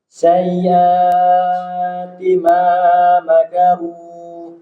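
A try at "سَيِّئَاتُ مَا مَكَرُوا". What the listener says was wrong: Jadi kalau Hamzah itu dimanapun berada harus kuat ya. Ya, jadi jelas. Jadi kasrohnya sayyi'ati ma makaru. Kurang, kasrohnya kurang. Hanya 2 harokat saja.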